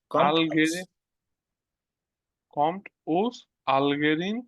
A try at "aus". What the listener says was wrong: উস না আউস।